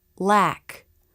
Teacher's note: the tongue comes through the teeth to make the light l